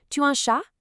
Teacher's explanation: you have rising intonation, where you literally just raise your voice at the end of a statement